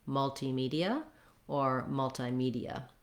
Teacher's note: Your stress is still going to be on the me syllable that has the tense E sound, and then you have an unstressed ia at the end, ia.